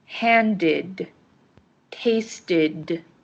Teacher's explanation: the e d in handed and tasted ended with an id sound